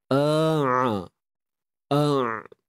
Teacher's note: untuk ain ni kita kena sempitkan pada bahagian tengah kerongkong kita